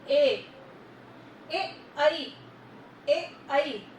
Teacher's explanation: कंठ से और तालु से आवाज निकल रही है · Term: कंठ तालव्य